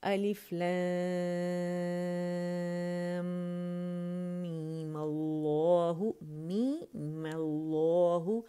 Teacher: اچھا دوسرا طریقہ روانی میں الف لام میم اللہ میم اللہ، یعنی میم ساکن کو 6 ادا کرنے کے بعد یا غنہ، اس یہاں ہم نے غنہ ادا کیا اور ہم نے بجائے میم کو 6 کھینچنے کی بجائے 2 کھینچا، صرف مد اصلی